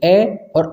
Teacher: तो इस प्रकार देखें कंठ स्वर में आपका कौन कौन सा आ जाएंगे, ऐसे ए है आपका और आ है, क्योंकि आप इन्हें बोल कर देखो तो आवाज़ कहाँ से निकल रही, कंठ से निकल रही, ए और आ आपका।